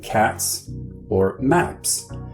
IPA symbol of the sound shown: s